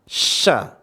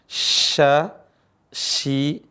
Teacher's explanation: cara bacanya adalah tengah lisan ketemu langit-langit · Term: huruf syin